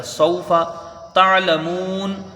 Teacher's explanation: تا کو عین سے ملا کے جلدی پڑھیں گے، لیکن خیال رہے کہ یہاں پر جھٹکا نہ ہونے پائے، بیچ الگ سے ادا کرنا ہے۔